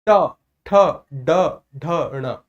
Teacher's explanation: ट ठ ड बोलने में जिस भी स्थान को जिह्वा छूकर धड़ाम से नीचे गिर रही है उस स्थान का नाम है मूर्धा।